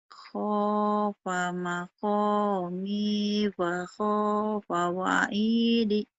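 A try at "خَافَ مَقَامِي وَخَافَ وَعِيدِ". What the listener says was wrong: Khafa maqami wa khafa wa'idi. Mahnya panjang. Mahnya panjang.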